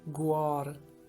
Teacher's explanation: the letter H is often a silent letter in Karachi Balochi